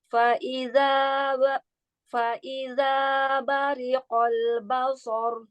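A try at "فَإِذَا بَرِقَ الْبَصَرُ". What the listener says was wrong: Bari, ri-nya tipiskan dulu, jangan menyeret ke huruf qaf. Fa'iza bariqo. Ya, langsung ya, ro-nya disukunkan. Basor.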